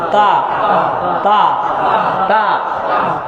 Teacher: শক্ত হবে, জিহ্বার আগা সামনের দুই দাঁতের গোড়ার সাথে লাগবে।